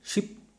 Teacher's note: Now describe is sh as a post alveolar voiceless fricative.